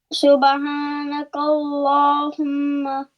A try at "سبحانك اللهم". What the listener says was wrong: Subhana, ha must be sharper.